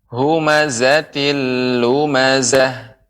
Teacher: pengucapan zai, ya itu lebih banyak lagi desisnya, lebih banyak dia getarannya